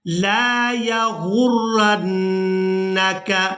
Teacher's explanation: را بھی مشدد ہے اور نون بھی مشدد ہے، ان دونوں کو آپس میں ملا کر ادا کریں گے. زبریہ غین را پیش غر، را نون زبر رن، یا غرن، نون زبر ن، یا غرن، کاف زبر کا، یا غرنک.